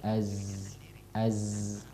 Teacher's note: Adapun huruf zai itu huruf ya sifatnya namanya sofir. Ya, dia ada siulan-siulan ya keluar. Itu ujung lidah ketemu dengan ujung gigi bawah. · Ya, dia ada siulan-siulan ya keluar. Itu ujung lidah ketemu dengan ujung gigi bawah. Ya, ujung lidah ketemu dengan ujung gigi bawah. Iya. Jadi ada angin keluar.